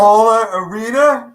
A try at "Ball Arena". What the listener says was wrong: It's not Baller. Ball. Yeah, Ball Arena. Ball Arena.